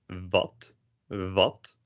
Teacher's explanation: the w is pronounced as vat vote pretty similar to a v but you don't expose any air